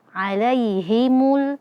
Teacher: Quri alaihimu ya sukun sebelumnya fathah. Maka di sini ada mad lin dibaca lembut ya.